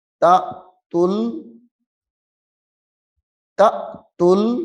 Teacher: یہاں پہ جھٹکا دے کے پڑھنا ہے کیونکہ حمزہ ساکنہ ہے